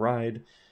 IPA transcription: raɪd